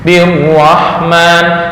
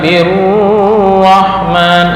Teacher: Ro yang bertasdid hanya lewat ya, artinya tanpa dengung.